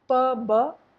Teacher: P-b, one is voiced and one is voiceless. P is voiceless, b is voiced.